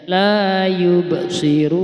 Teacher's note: Qalqalah sughra harus dibaca dipantilkan. Yub sirun. Yub harus ada pantulannya.